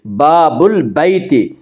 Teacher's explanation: معرف باللام سے پہلے بابل کا لفظ لایا تو اس میں ال کا حمزہ یعنی یہ حمزہ ساقط ہو جائے گا، گر جائے گا، تو ہم پڑھیں گے باب البیت، گھر کا دروازہ۔